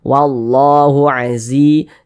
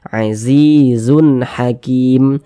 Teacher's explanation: Sebelumnya ada huruf yang memiliki tanda baca kasrah, maka huruf tersebut dibaca panjang. Sehingga zi dibaca panjang, mad tabi'i panjangnya 2 harokat.